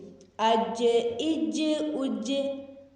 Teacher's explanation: اب جیم پہ قلقلہ بھی ہو رہا ہے